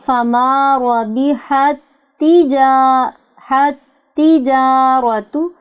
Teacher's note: تا کے بعد تا مشدد موجود ہے, یہاں ادغام ہوگا, دونوں تا کی ایک ساؤنڈ پیدا ہوگی